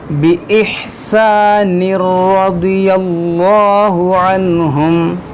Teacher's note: جب ملائیں گے تو تنوین کے بعد را ہے تو یہاں پر ادغام کریں گے